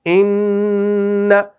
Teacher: یہ ہو رہی ہے اس ناک کے بانسے سے، کیونکہ غنہ کی جو آواز نکلتی ہے یہ منہ سے نہیں نکلتی، یہ دانتوں سے نہیں آ رہی، یہ زبان سے نہیں آ رہی